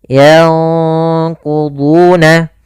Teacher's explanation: Dan qaf termasuk huruf yang tebal, maka ikhfanya juga ikhfa yang kita tebalkan. Yanquduna. Kemudian kita tahan gunnahnya.